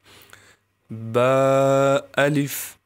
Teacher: جو ہونٹوں کی تری والا حصہ ہے اس سے با ادا ہوتا ہے، یعنی جہاں پر ہلکا ہلکا ہونٹ گیلے ہوتے ہیں وہ جگہ جب اوپر کے ہونٹ سے لگے گی تو پھر با ادا ہوگا۔